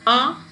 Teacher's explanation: you can call it as back open rounded